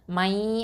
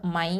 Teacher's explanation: இத்ஹாம் ஆகும்போது மை அந்த ஹுன்னா கொடுக்கணும் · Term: இத்ஹாம் பில் குன்னா